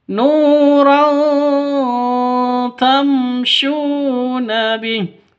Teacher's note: Mim mati bertemu dengan shin. Jelas, terang, karena bacaan izhar safawi.